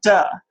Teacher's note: The tongue is up against the alveolar ridge and airflow is cut off. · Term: voiced alveolar plosive